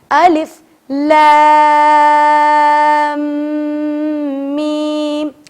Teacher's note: اچھا، اب لام کو ہم نے 4 سے 5 سے 6 الف کے برابر کھینچ تو لیا، لیکن چونکہ میم پر تشدید ہے، جب ہم لام کو میم سے جوڑیں گے تو اپنے شفتین، عربک میں کہتے ہیں شفتین، ہونٹوں کو، ہونٹوں کو جوڑ کے رکھیں گے · الف بولنے کے بعد لام پر مد واجب ہے، مد واجب کو 4 سے 6 الف کی مقدار کے برابر کھینچنا ضروری ہے۔ تو جب آپ لام بول رہے ہوں تو اپنی فنگرز کو 4 ٹائمز کھولیں۔